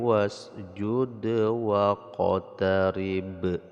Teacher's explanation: dal yang sukun dan ba yang sukun dibaca qalqalah, tetapi bedanya kalau waqtarib karena kita wakafkan di sini maka ini qalqalah kubra, sedangkan wasjud qalqalah sughra.